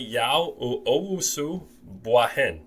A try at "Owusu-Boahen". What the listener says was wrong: Pretty good. It's the accent on Boahen is on bois, not the hen. actually Boahen.